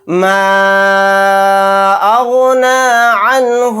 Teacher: نون ساکن کے بعد ہا آ گیا تو یہاں پر اظہار حلقی کا قاعدہ ہوگا، نون کو ظاہر کر کے بلا غنہ کے جلد پڑھیں گے۔